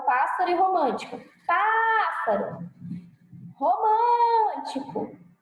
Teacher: proparoxítona, a sílaba tônica é a antepenúltima da palavra.